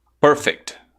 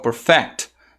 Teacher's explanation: com a tônica no início, perfect, ok? Inclusive, essa daqui é uma palavra que ela pode também ser pronunciada como com a tônica no final